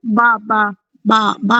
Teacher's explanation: जी बंद होठों के गीले हिस्से से अदा की जाती है। बा बा बा बा की अदायगी होती है गीले हिस्से से।